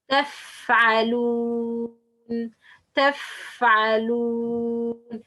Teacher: The bottom edge of the front 2 upper incisors touches the inner bottom lip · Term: fa letter